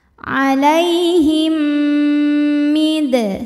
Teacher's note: mim pertama dileburkan ke mim kedua disertai bunyi dengung m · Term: idgham mimi